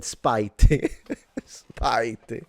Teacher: it kind of ended like with a T and a very almost silent I